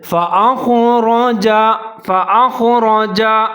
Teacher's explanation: उससे आगे रा के ऊपर ज़बर है, उसको भी आपने मोटा पढ़ना है, बारीक नहीं पढ़ना।